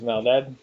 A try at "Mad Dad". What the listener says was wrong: Mad Dad. You said Mal Dad.